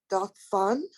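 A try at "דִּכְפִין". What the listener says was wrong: Check out the vowels. Dich, fin.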